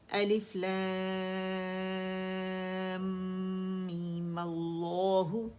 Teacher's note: میم اللہ just مد اصلی بنایا، فتح پہ ڈالی اور آگے سے لفظ الجلالہ سے جوڑ دیا